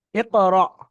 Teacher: আলিফকে ঝাটকা দিয়ে পড়া হলো, যেহেতু এটা হামজা সাকিন আছে।